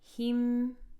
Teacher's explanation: Ha with the kasra going into the meme with sukoon. Keep that kasra nice and sharp.